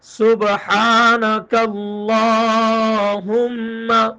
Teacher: سبحانہ میں سین ہے، صاد نہیں، موٹا نہیں کرنا اس کو